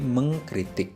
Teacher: Kritik bertemu dengan imbuhan me, maka tetap menjadi mengkritik. Huruf K tidak berubah menjadi bunyi nasal. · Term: konsonan rangkap